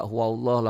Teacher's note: Ahad Qul Qul pendek Qul namnya Idhar Qul hua hua huallah lafad Allahnya dibaca tebal tafkhim Kenapa tafhim karena sebelum B Allah baris di atas kayak gitu